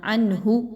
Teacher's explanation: عنہ، نون ساکن کے بعد ہا کا حرف آ گیا ہے، اور ہا کا جو حرف ہے وہ حروف حلقی میں سے ہے، اظہار میں سے ہے، تو آپ نے اس کو بہت کلیئر پڑھنا ہے، نون کی آواز کو غنہ یہاں پہ نہیں کرنا۔ عنہ، یہاں پہ عنہ ایسا کرنا درست نہیں ہوگا۔